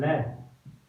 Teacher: लय को हम बोलते हैं, लय को जब बोलते हैं तो जीवा के दोनों साइड से हवा नीचे हवा निकलती है, जीवा के दोनों साइड से हवा निकलती है, इसलिए इसको कहते हैं पार्श्व